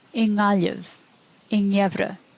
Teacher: If the word begins with G, uru adds an N at the beginning of the word, and you hear ing, like the end of the word wing in English